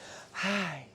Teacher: She was very breathy.